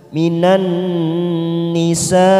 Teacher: mat wajib mutasil karena ada mat yang bertemu dengan hamzah dalam satu kalimat